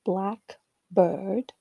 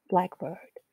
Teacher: The second syllable in the first sample, blackbird, is also clearly longer than in the compound, blackbird, where it seems relatively compressed and both syllables are of similar length, blackbird.